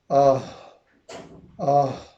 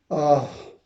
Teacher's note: آہ آہ، یہ ادا کرتے ہوئے سینہ یعنی دونوں حروف ادا کرتے ہوئے محسوس ہونا چاہیے کہ آواز سینے کے قریب حلق میں جا رہی ہے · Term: گول ہا